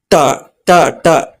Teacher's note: ಮಡಿಚಿದ ನಾಲಿಗೆಯಿಂದ ಟ ಹೇಳ್ಬೇಕಾದ್ರೆ ನಾಲಿಗೆ ಟ ಟ ಟ ಸ್ವಲ್ಪ ಫೋಲ್ಡ್ ಆಗುತ್ತೆ